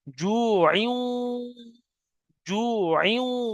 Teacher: তানবিনের পরে ওয়াও এসছে ইদগামে নাকিস, একালি পরিমাণ গুণনা করতে হবে তখন।